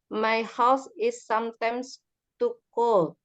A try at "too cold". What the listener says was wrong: Too cold. Ada D-nya. Too cold. cold.